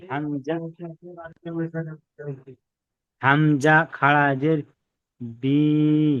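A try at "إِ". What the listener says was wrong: বি নয়, ই ই। হামজা খাড়া জের ই।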